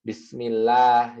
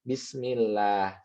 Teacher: lamnya enggak tebal tapi tipis biasa aja. Bismillah seperti itu.